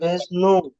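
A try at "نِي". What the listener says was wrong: নুন ইয়া জের আছে, পেশ কোথায়? নুন ইয়াজের নু। নুন ইয়াজের নি, আরি নি।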